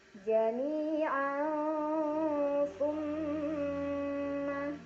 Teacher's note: Ada gunnah musyaddadah karena ada mim yang bertasydid. Cara bacanya didengungkan, ditahan kurang lebih 2 harokat sampai terasa getaran halus ke hidung.